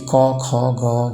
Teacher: कणठ्य भनेको चाहिँ घाटी कण्ठबाट चाहिँ घाटी घाटीको माध्यमबाट उच्चारण हुने वर्णहरू। जस्तै कि क ख ग यो भन्दा घाटीमा प्रभाव परेर उच्चारण हुन्छ। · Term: कणठ्य वर्ण